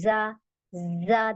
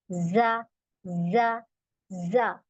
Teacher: यह वाला ज हमारा बजिंग है क्योंकि इसमें हमने बजिंग देना है इसमें हमने सीटी निकालनी है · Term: बजिंग साउंड